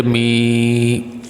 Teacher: اگر میم کے نیچے زیر ہے اس کے بعد یا ساکن ہے، یا ساکن سے پہلے زیر آ گئی، یہ حروف مدہ ہے، اس کو لمبا کریں گے